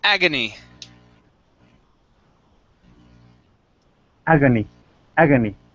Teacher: This word here is pronounced agony with the stress at the very beginning